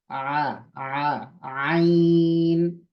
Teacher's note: थोड़ा सा लंबा करके पढ़ेंगे देखिए इसकी आवाज कहां से आएगी हलक के दरमियानी हिस्से से बीच के हिस्से से